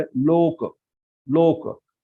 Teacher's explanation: इसलिए हमने ओ को खींचा है, मतलब दीर्घ किया है, लोक ऐसा हम कहते हैं